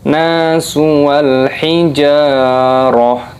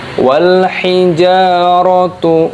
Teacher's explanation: tak marbutoh ini berubah menjadi huruf ha ketika berhenti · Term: waqaf